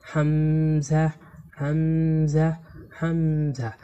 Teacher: এই হামজা হরফকে কন্ঠনালীর শুরু থেকে শক্ত করে পড়তে হয়।